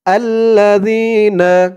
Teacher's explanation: আল্লাহ এক আলিফ টান জের এর পরে ইয়া সাকিন আর এখানে জালের উচ্চারণটা একদম নরম পাতলা হবে জিহ্বার মাথা উপরের দাঁতের মাথার সাথে লাগবে